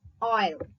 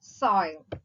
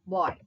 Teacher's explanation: So it can be described as a glide from a back rounded vowel between open and half open to a front unrounded vowel between close and half close. So இதுல தான் rounded வந்து unrounded ஆ மாறும்.